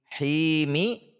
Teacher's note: Himi huruf ha, makhrajnya sama dengan huruf ain. Sebagaimana yang sudah disampaikan, harus tipis, tidak dilepas menjadi himi, tidak ke atas menjadi khimi.